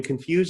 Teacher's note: confuse ends with the final syllable stress, fuse, where disorient doesn't